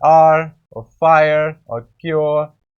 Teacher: they have 3 different vowel sounds, and you glide from one to the second one and to the third one, and you have to articulate it in one syllable. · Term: triphthongs